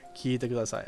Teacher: Notice the extended E sound here.